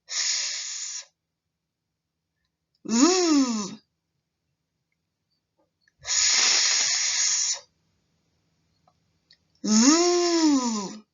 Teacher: We call them sister sounds. Both the S and Z are consonant sounds and are made by putting your tongue close to the ridge behind the upper teeth in your mouth and pushing air out of the mouth.